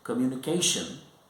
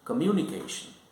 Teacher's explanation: Communication, the stress on the third syllable, and communication, here the stress is on the second syllable.